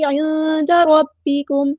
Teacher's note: نون ساکن کی آواز کو ہم نے چھپا دینا. اخفاء ہو رہا ہے